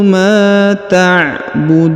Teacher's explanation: huruf Ma dibaca panjang dua harakat karena di depannya terdapat Alif